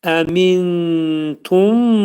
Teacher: Tə hərfi ixva hərfi olduğuna görə nun hərfi tənin məxrəcində gizlədilir. Təxminən 2 saniyə müddətində əmintum.